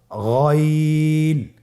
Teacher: হারাফটি উচ্চারিত হয় কন্ঠনালীর শেষ ভাগ হতে